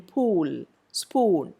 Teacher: per changes peel speed and so on whereas the purp becomes a lip rounded sound in pool spoon again under the influence of the sound that comes after